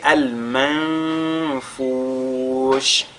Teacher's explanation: Al-manfush, nous avons un nun sakinatu suivi de la lettre fa. On fait ici ce qu'on a appelé al-ikhfa.